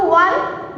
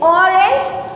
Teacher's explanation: When it comes to one, there it gives out the W sound, but here it is giving out O sound